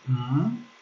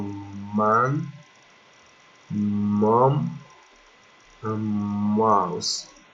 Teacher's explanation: you have to press the lips together and make a sound blowing air out of the nose. It's nasal, and the sound is mm, like for example, man, mom, and mouse.